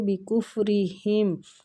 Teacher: را کو زیر کی وجہ سے باریک پڑھیں گے